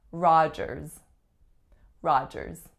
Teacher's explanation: Has 2 syllables, the winner's on the first ah, and the second syllable has the vowel followed by a voiced z